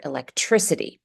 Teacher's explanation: The suffix ity will always be pronounced as a D. It's a T between two vowels, an I vowel and an E vowel. So it's always going to be itty, like in the word electricity. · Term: light D